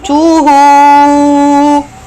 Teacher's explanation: you have to make this ha longer sound with a 2 haraka, which is called mad sila